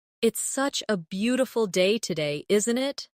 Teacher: the intonation rises at the end, making it sound like a friendly remark